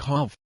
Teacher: a French would typically pronounce a as a long a as in hard without the rhotic r, so have sounds like hov.